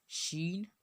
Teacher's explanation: جس طرح بیچ زبان تالو سے مل کر جیم ادا ہوتا ہے اسی طرح شین بھی ادا ہوگا۔ بیچ زبان تالو سے مل کر شین ادا ہوتی ہے، یعنی ایک سیٹی کی طرح شین، اسی کو شین بولتے ہیں۔